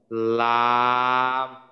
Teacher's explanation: মাখরাজ জিহ্বার আগার কিনারা সামনের উপরের দাঁতের মাড়ির সঙ্গে লাগাইয়া উচ্চারিত হয় লাম।